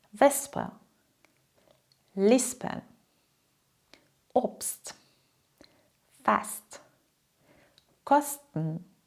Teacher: Nicht mehr ‚schp‘ oder ‚scht‘, sondern einfach: “sp” wie: s + p “st” wie: s + t